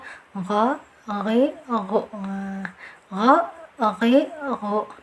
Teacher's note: Rakhawah artinya mengalir, lawan dari syiddah. Jadi gha, dialirkan saja ya. Jangan ditekan, jangan ditahan.